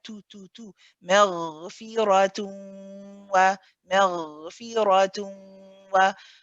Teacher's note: We have a heavy ra, but we have to remember to keep the ta after it light.